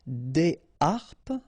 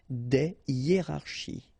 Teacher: no liaison here, here, here, and here. All right, because these words are starting with what we call H aspiré.